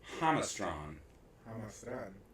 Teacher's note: Hamastan with the accent on the first syllable